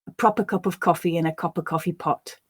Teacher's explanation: the ah and of were both reduced to a word taking the schwa sound ah becoming uh and of of now reducing these sounds can · i stressed those words which were the content words and the other words became much less stressed um they were reduced so the ah and of were both